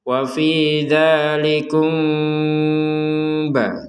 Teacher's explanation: Wa fi dzalikum ba, jadi kumnya kita ada unsur dengung, ya namanya samar, itu ada unsur dengungnya. Tapi nanti ke ba, jadi bukan ke mim.